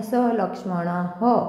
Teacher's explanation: पंक्तीच्या शेवटी येणाऱ्या विसर्गाचे उच्चारण ह सारखे केले जाते स्वरानुसार हे विसर्ग ह हे ही हा मध्ये परावर्तित होतात जसे